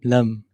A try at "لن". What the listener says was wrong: Lan with a noon, yeah.